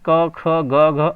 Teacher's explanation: उच्चारण स्थान कंठ से होता है, इसलिए इस वर्ग के व्यंजन को कंठ व्यंजन कहते हैं